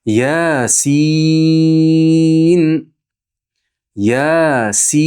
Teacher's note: Yasin. Sin esa olti harakat miqdorida cho'zilinadi · Yasin, ya 2 harakat miqdorida cho'ziladi. Sin esa 6 harakat miqdorida cho'ziladi. Chunki sin harfi 3 ta harfdan tashkil topgan. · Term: Maddu lazim harfiy, Maddu lazim harfi